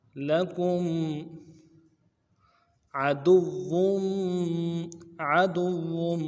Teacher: आइन को मोटा अदा करना है, दाल को वाव के साथ मिलाना है, वाव के ऊपर तशदीद है, वाव मद्दा भी है, खींचेंगे भी और तशदीद भी है, ज़ोर भी लगाएंगे और आगे वाव के तनवीन को मीम के साथ मिलाएंगे।